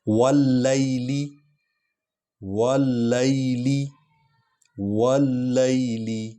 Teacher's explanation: واللیل واللیل واللیل اذا یغشا واللیل، یہ واو اور لام کو اکٹھے پڑھیں گے کیونکہ اس پر شد ہے، اور لام اور یا کو لین انداز میں پڑھیں گے کیونکہ یہ یا سے پہلے زبر والا حرف ہے۔ یہ ایک قاعدہ ہے، وا اور یا سے پہلے زبر والا حرف ہو تو اس کو نرم انداز سے پڑھا جاتا ہے۔